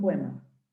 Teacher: Cuando hacemos, si se dan cuenta, cuando las junto, la O llega a parecer una U.